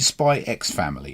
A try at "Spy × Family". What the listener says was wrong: Yeah, I don't think you pronounce. I think you just go Spy Family.